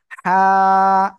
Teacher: হ্যাঁ, এই যে অক্ষরটা কোন জায়গা থেকে উচ্চারিত হয়? গলার মধ্যখান থেকে। গলাটা চেপে একালিপ টানিয়া হালকা বাতাস বের করিয়া উচ্চারণ করিব।